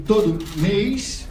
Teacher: o último fonema dessa palavra é uma fricativa, né, que é o S, mês. Inclusive no dialeto goiano esse S quase sempre é muito alto em frequência, e ele está aqui, claramente.